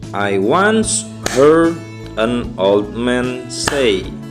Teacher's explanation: Nah, saya bertepuk 2 kali di kata heard dan di kata say. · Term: stress